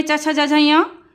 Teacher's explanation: चा वर्ग में च छ ज झ य ये तालब से बोले जाते हैं